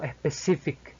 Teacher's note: finalmente con la K, sonido más explosivo que el de una C española. Por lo tanto, este primer término se puede definir o pronunciar como specific. · Inicialmente con la S española seguimos con la P, la sonido más explosivo que el de una P española. Seguimos con una I, la cual es más breve que el de la I española, otra vez con el acento ascendente, que esto indica que necesitamos mayor fuerza de voz para poder pronunciar la siguiente sílaba. · Seguimos con otra I, que es el sonido más breve que la I española